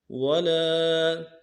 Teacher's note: لام کے بعد الف مدہ ہے، ایک الف مقدار میں کھینچیں گے